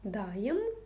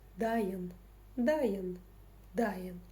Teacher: Просто помним о том, что буква «ы» читается очень коротко. Ну, хотя в данном случае можете представить, что ее нет.